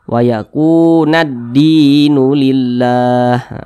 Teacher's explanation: huruf lamnya tidak dibaca langsung masuk ke huruf Dal · Nah, karena cara membaca huruf lamnya ini dia diidghamkan. Nah, jadi huruf lamnya ini dia tidak dibaca langsung masuk ke huruf dal. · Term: alif lam syamsiyah